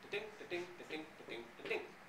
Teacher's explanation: there's a stress on the second syllable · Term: iamb